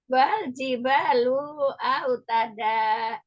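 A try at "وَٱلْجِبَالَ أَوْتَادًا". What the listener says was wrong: wal la bukan lu wal jibala.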